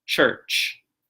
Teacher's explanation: So it's spelled, when we write the word church, it's spelled with a U-R, but it's actually just the vowel R, linguistically speaking · Ch, that sound, same one on either end, right? And in the middle, we have the vowel R, the vocalic R.